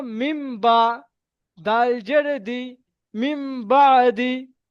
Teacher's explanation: নুন সাকিনের পরে বা এসছে, তাই নুন সাকিনকে মিমের দ্বারা পরিবর্তন করে পড়তে হবে।